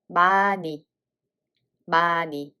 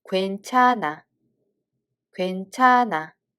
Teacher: hieut is a mute and ㄴ sound consonant carries over.